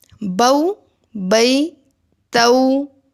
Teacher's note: حرف لین بھی حرف مدہ کی طرح ایک الف کے برابر لمبے کیے جائیں گے، لیکن ادائیگی میں آواز معروف ہوگی، مجہول نہیں ہوگی۔